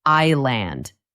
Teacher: The S is silent.